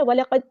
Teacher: दाल साकिन पे कलकला हो रहा है